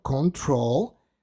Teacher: control tiene el acento en su última sílaba